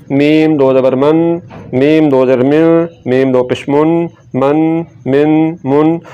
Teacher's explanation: میم کو پڑھیں گے دونوں ہونٹوں کے خشک حصے کو ملاتے ہوئے